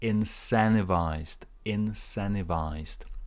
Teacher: you cancel the T and you put your stress on the second syllable